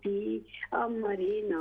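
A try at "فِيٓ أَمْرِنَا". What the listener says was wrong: फी मद लंबा करें, फी अमरिना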